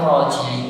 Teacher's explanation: Walaupun memang roh itu termasuk sifat yang dia ada getarannya, tapi jangan terlalu banyak. Biasa aja. Getarannya dikit aja.